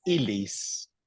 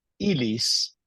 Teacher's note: ilis is pronounced like one L, okay? It's not like in Spanish